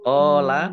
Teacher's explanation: qof fathah Alif Mad thi'i panjang dua harakat